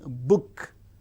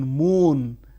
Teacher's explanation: Bilabial, the active articulators are the two lips, as in book and as in moon.